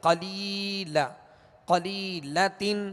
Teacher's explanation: لام یا زیر لی, یہاں یا مدہ ہے, یا ساکن سے پہلے زیر ہے لہذا یا مدہ ہوگی. ایک الف کی مقدار کھینچ کر معروف طریقے سے پڑھیں گے